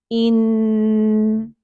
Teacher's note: بالکل نیچے ٹھہری ہوئی ہے اپنی جگہ پہ، نون کے لیے اوپر اٹھ کے اوپر کو ٹچ نہیں کرتی تالو کو۔ اگر ہم نون کو ساکن کریں ان، تو زبان کی ٹپ اوپر جاتی ہے